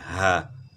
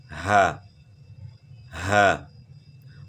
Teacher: اور ہا کی آواز جو ہے یہ گلے کے آخر سے ہے، گلے کے آخر یعنی سینے کی طرف سے جو ہے نا آواز نکلتی ہے، گلے کا آخر سینے کی طرف، اس کو اقصی حلق کہتے ہیں، یعنی گلے کا وہ حصہ جو سینے کی طرف ہے، یہاں سے ہا ادا ہوتی ہے، ہا۔